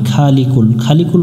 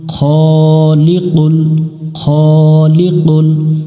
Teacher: খ, খ অক্ষর আছে এখানে, এখানে আমরা অনেকজনে ভুল করি খা পড়ি, খালিকুল, খালিকুল পড়া যাবে না, খ পড়তে হবে, জবরে আকার পড়া যাবে না